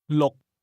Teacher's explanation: 6點鐘。6點鐘。 Say again, 6, using a low-level tone.